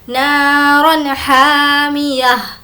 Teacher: تنوین کے بعد ہا ہے اور ہا بھی حرف حلقی میں سے ہے تو یہاں پر بھی اظہار کر کر پڑھیں گے